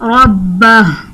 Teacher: جب حرف قلقلہ مشدد ہو تو اس میں قلقلہ خوب جماؤں کے ساتھ کیا جاتا ہے